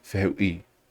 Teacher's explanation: it's not the e, it's not the u, but the I that's accented. So you got to make sure you don't like give secondary stress to the e or anything.